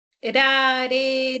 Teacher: Cuando articulas rareriru, la lengua le está dando un golpe a la zona alveolar · La lengua le está dando un golpe a la zona alveolar. Es una vibrante simple. Pero también puede ser una vibrante múltiple.